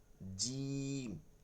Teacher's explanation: নরম জাস্ট মোটা আর চিকন ذال ظ ذال ظ ذال জিম জিম শক্ত এটা জিহ্বার মধ্যখান থেকে ذال জিম ذال জা, জা, নিচের দাঁতের সাথে জাটা হয় নিচের